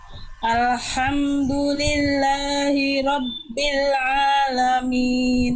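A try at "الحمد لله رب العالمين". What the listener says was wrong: ya bagus lanjut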